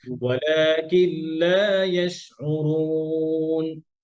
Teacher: ওয়ালাকিন এবং লাম আলাদা করে বলবেন, আর লামটা আওয়াজ উঁচু করবেন